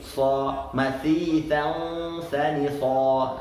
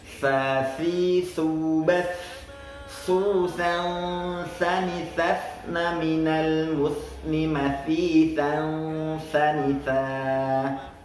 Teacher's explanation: huruf tha merupakan huruf tipis, jadi harus kita tipiskan, tidak boleh kita tebalkan. Banyak kejadiannya ketika orang menyebutkan huruf tha, ketika di akhir-akhir ketika huruf tha tersebut berada di akhir kalimat, dia tebalkan jadi so mathisan sanitha.